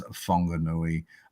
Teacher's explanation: In Maori, a WH is pronounced as a fa, and every vowel sound is pronounced. So that word comes out as Whanganui.